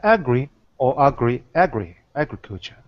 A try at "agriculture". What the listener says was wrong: Agriculture. Not gree, but gr, because it's not stress.